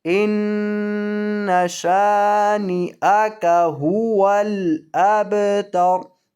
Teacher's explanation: وقف کریں گے تو را کو ساکن کر کے پڑھیں گے